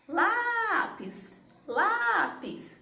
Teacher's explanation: Duas sílabas e a penúltima é a mais forte. Então, é uma palavra paroxítona.